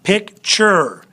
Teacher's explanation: So pick is a little bit higher. Ture is a little bit lower. More accent on this first one. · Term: unaccented final syllables